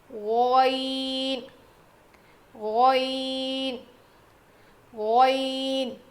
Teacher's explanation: غین کا مخرج کیا ہے؟ حلق کے اوپر والے حصے سے ادا ہوتا ہے. جیسے خوا ادا کیا تھا نا, اس میں کھردری آواز آئے گی, اس میں نہیں آئے گی, بالکل صاف آواز آئے گی.